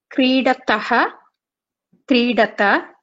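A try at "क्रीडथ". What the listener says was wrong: Just make sure that for the Madhyama Purusha Dvivachana Bahuvachana, you pronounce the Mahaprana Thakara correctly. Creedatha, creedatha. Otherwise you will confuse it with the Dvivachana of Prathama Purusha. Creedataha is the Prathama Purusha Dvivachana. Creedatha is the Madhyama Purusha Dvivachana.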